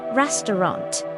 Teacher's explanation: Stress on first syllable.